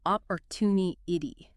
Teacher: stress that third syllable